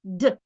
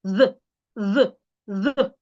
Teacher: the first D your tongue is inside d the second your tongue should be outside